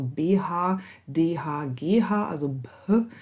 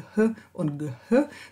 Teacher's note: die indogermanischen stimmhaften Verschlusslaute, also die sind behaucht